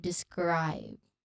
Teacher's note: This cluster combines S then K, which is unaspirated, and then R to create the word describe. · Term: SKR cluster